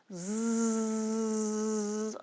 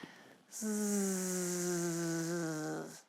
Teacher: It's not a j, it's zzz. I can hear my voice, I can feel my vocal cords vibrating. You put your tongue on your palate, just behind your front teeth, your top front teeth, and zzz.